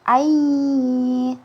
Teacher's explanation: misalnya huruf ya bertasydid, langsung ai, seperti ai, jadi ditahan dan dengung